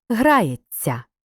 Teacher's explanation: у дієсловах буквосполучення ся передаємо довгим м'яким ц